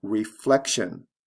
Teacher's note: reflection where the stress comes right before the tion ending